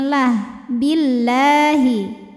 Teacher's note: lam jalalah dibunyikan secara tarqik sebab huruf sebelumnya berbaris kasrah maka dibacanya tipis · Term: tarqiq